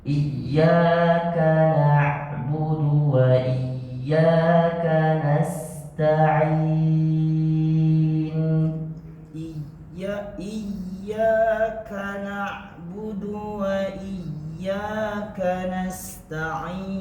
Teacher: Desis yang paling kecil huruf K. Iyyaka sedikit saja. Desisnya seakan-akan tidak keluar, ketahan. Tapi dia secara tidak sadar dia keluar sedikit.